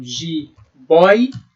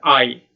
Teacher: temos o ditongo aberto oi. A boca aberta, oi.